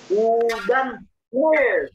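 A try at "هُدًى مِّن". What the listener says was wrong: Salah. Hudan min. Salah. Sudah saya kasih tahu hudan min. Hurufnya H, da, ya, mim, non. Tidak ada lam itu di situ.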